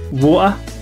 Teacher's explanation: in many cases the T sound is dropped